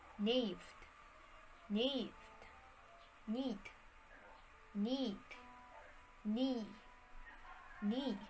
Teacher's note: the initial consonant sequences the gn consonant and kn consonant had lost their first element by the early 17th century